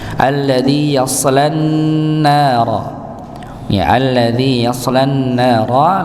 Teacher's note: lamnya langsung masuk pada huruf nun yang bertasydid